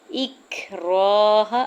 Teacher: را کو زبر کی بیس پہ پر یعنی موٹا پڑیں گے، اور الف سے پہلے را کے اوپر زبر ہے تو الف مدہ بھی ہوگا، ہا کے زبر کو بغیر کھینچے ہوئے ادا کرنا ہے۔